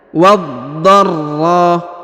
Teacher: huruf ra ditahan dan ditekan, ya,